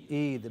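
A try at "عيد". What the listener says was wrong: Not so long in our language. I am under the influence of English. I am making it Eid. It is not Eid. It is Eid. Eid.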